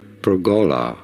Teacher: perola in American English however this is normally pronounced as perola with an emphasis a stress on the second syllable the go syllable